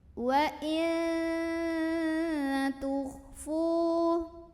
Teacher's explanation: Ada ikhfa aqrab lagi karena ada nun sukun yang ketemu sama huruf ta. Maka bunyi nun sukunnya dibunyikan samar-samar, jadi tidak jelas n. Mau bilang ta sambil ada dengungannya.